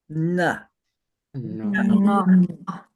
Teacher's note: the nasal has the tongue flat up against the roof of your mouth and pulled back. Na. It's a very subtle difference.